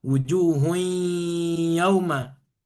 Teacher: walaupun masuk ke ya masih tersisa nun ya. Wujuh masih ada yang masuk ke rongga hidung ya. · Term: idgamnya tidak sempurna